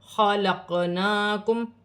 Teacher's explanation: قاف ساکن ہے، حروف قلقلہ میں سے ہے، قلقلے کے ساتھ ادا کیا جائے گا ، نون پر کھڑی زبر ایک الف کی مقدار کھینچ کر